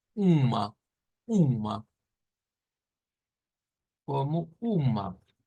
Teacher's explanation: con esa A retractada, ¿verdad? Un poquito hacia el medio de la boca